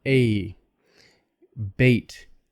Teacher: vowel we call it diff long a double vowel a bait it's long because it's a double vowel so don't make it a short a